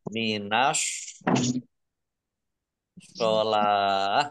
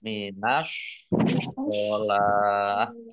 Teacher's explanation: langsung masuk ke huruf shot ditandai dengan shotnya ada tasdidnya. Nah, shot ini dibaca mencucu minas sholah seperti orang mau bersiul